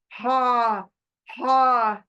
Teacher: इसको बीच के गले से टच करके निकालना है